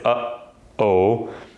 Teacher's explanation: vocal cords are closing there's no air coming out and it makes that sound